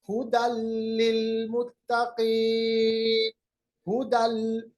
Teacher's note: दो जबर को बिल्कुल लाम के साथ हमने मिलाया। इसी तरह है मेवालिन, मिन वालिन के बजाय मेवालिन, क्योंकि हमने नून साकिन को वाव के साथ मिलाया।